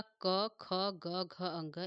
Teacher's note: क, ख, ग, घ, अंग, इन पांचों का उच्चार स्थान क्या है? तो दोस्तों कंठ है।